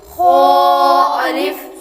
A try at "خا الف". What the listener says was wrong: خا کو موٹا بھی کرنا ہے حروف مستعلیہ میں سے۔ حروف مستعلیہ جو ہوتے ہیں یہ ہر حالت میں ہمیشہ موٹے پور یعنی موٹے پڑے جاتے ہیں۔ خا الف،